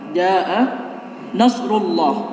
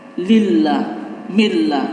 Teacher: Ketika ada lafaz Allah diawali oleh fathah atau dhammah. Rullah ini tebal karena diawali oleh dhammah. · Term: lafzul jalalah tafhim, tebal